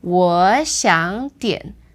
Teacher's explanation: the first two become second tone, and the third word stays the third tone. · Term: tone change